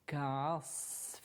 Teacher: Ka, and then you have the ayn from the middle of the throat